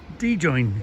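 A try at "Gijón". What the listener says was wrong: No, not D. Where's the D come from? Gijon. It starts with a G. G-J-O-N.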